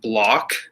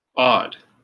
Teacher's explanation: the o makes an ah sound so that's a short o